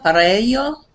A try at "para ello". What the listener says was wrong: Bien. Lo has hecho bien.